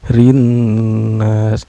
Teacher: Nah, ketemu lagi sama alif lam syamsiah karena ada alif lam bertemu dengan huruf syamsiah yaitu nun ya. Cara bacanya, alif lamnya tidak dibaca ya, melainkan memasukkan dari huruf ro ke huruf nun. Ro-nya juga ini dihukumi tarkik ya, karena ro berbaris kasroh.